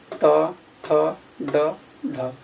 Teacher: इसका उच्चारण स्थान मूर्धा हो जाएगा